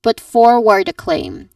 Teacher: you emphasize um on forward and claim the last word